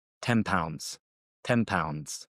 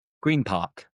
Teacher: Another assimilation we have N + P / B becomes almost like an M. So the N sounds often moves to the lips to prepare for P or B.